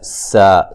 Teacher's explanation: سین کو باریک سیٹی سے ادا کریں گے